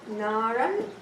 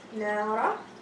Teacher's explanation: So you drop the fatha tanween, it became alif. So fatha tanween is gone, it became only a longer alif, and you elongate for 2 haraka, and it's called mad al-iwad or replacement mad.